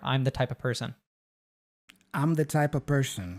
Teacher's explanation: the of the V gets dropped and we also just pronounce it as a schwa